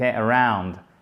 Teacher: Vous voyez, ça commence par un A et après, on a l'autre syllabe. Du coup, l'accent tonique, à chaque fois, il est sur la seconde syllabe